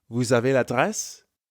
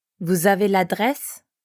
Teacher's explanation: Because vous ends in S, we have a liaison between vous and avez.